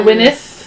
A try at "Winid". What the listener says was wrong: A Winid. No, it's a Winid. Ends with the D. I still say a Winid.